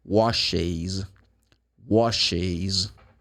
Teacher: you add one more syllable because you have sibilant sound.